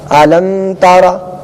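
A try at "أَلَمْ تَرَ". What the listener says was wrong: اس میں غنہ نہیں کریں گے. الم تر، قاعدہ کون سا ہو رہا ہے؟ اظہار شفوی. کس طرح ہو رہا ہے قاعدہ اظہار شفوی؟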